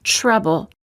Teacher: say CH as in chain but just make the tip of the tongue a bit more tense when it touches the gum Ridge and focus on creating a stop of air t words for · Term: almost CH sound